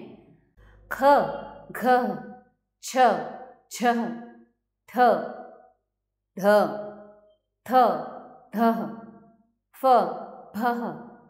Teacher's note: अधिक मात्रा में श्वास वायु निकल रही है और ह की ध्वनि आ रही है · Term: महाप्राण व्यंजन